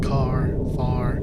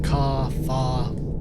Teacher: We don't pronounce any final R in words like car, far. Phonetically, our common pronunciation is indistinguishable from ka, fa. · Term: New England accent